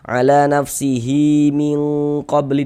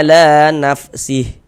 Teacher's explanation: Mad silah qasirah atau mad silah sughra. Panjangnya kalau diwasolkan dibaca dengan panjang 2 harokat. Kalau diwakafkan gugur tanda panjangnya.